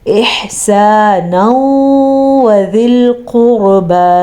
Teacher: نون تنوین کے بعد یا میم واو نون میں سے اگر کوئی حرف آ جائے تو ان دونوں الفاظ کو آپس میں ملا دیتے ہیں، غنے کے ساتھ ملا لیتے ہیں، اسی لیے اس کو ادغام بالغنہ کا قاعدہ کہتے ہیں.